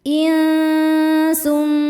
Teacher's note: Lam yathmithunna insum in ada hukum ikhfa hakiki ausat karena nun sukun bertemu dengan huruf sin. Cara bacanya nun disamarkan ke sin disertai bunyi dengung. Samar dan dengungannya sama besar. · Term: ikhfa hakiki awsat